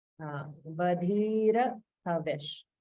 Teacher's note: So we don't roll the R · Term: single Ra